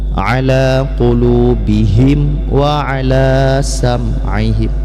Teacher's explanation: Jangan sampai alaihi ya, yang benar ala qulubihim, jangan sampai bihim, tapi bihim, jelas dibaca mimnya kemudian tanpa dengung masuk kepada waw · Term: izhar syafawi